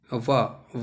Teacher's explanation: ठीक, और उसके बाद हमारा अंतिम रह जाता है ये वा जो है दंतोष्ठ होता है, दांत और ओष्ठ दोनों से मिलकर होता है वा